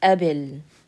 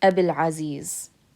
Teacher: So we skip over this alif, and instead of saying al, we say abil. We connect this Abi, the E sound, to the L, and it becomes, it kind of sounds like il. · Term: Hamza al-wasl